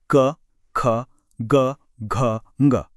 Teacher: ये सारी आवाजें गले के एकदम अंदर से आ रही हैं। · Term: कंठव्य